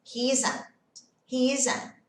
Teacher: esse T aqui no final, eu seguro ele. Parece que eu vou falar, mas eu não falo.